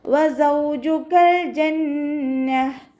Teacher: വാവ് ഉച്ചരിക്കുമ്പോൾ ചുണ്ടുകളൊന്ന് വട്ടത്തിൽ പിടിച്ചു കൊടുക്കുക. കാഫിനെ കുറച്ചൊന്ന് ചരിച്ചിട്ട് ഉച്ചരിക്കാൻ ശ്രദ്ധിക്കുക കേട്ടോ.